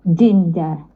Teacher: Jim dia kena langit-langit ni.